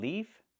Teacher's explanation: with the F sound with no voice